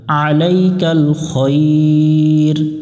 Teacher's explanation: যদি থামি তাহলে এখানে দুই আলিফের একটা টান দিতে হবে, আলাইকাল খৈর। আর যদি না থামি তাহলে আলাইকাল খৈর পড়ব এখানে।